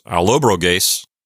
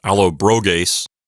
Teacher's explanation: So instead of Allobrogi, it's Allobroges, and I'm pretty sure the accent is on the antepenult.